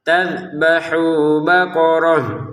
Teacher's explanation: ingat dalalnya jangan dipantulkan